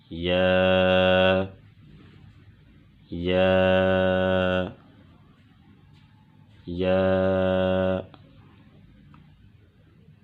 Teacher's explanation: زبان کا درمیان ہے اور زبان کے بالمقابل، زبان کے درمیان کا جو بالمقابل اوپر کا تالو ہے، یہ یا کا مخرج ہے، یا، یا، یا۔